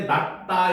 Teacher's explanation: 낫다 같은 경우도 쌍시옷 받침인데 낫다 이렇게 디귿으로 발음이 되죠. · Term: 대표음